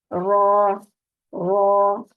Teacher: नून, नून, ठीक है। रॉ, जुबान की नोक की बैक साइड जो पुश्त है उसको ऊपर के सामने वाले 4 दांतों के मसूड़ों से लगाकर अदा करेंगे